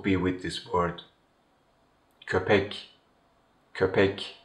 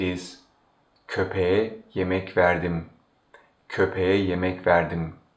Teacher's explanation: If you want to say I gave food to the dog, in Turkish it is köpeğe yemek verdim, köpeğe yemek verdim. When the word köpek receives the suffix e, the last k changes into yumuşak g, which is the voiced counterpart of k.